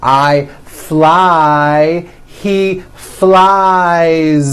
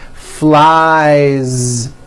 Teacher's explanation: the verb fly which ends in the vowel sound i so you've got i fly he flies keep that ending voiced